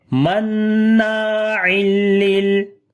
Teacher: On the noon there is shad sign, we make gunna, and also we learn due to alif madda. After the tanween, the next letter is lam, we make idgham without gunna, and on the lam we make tawassut quality, like on the both lam.